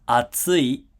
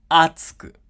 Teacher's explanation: Okay, notice that the accent here moves over to the left, so atsui becomes atsuku. So in atsui, tsu has the highest pitch in the word, but in atsuku, a has the highest pitch in the word.